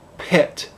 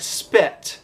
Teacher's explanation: a bunch of air is released like in pit unless it's in a consonant cluster like spit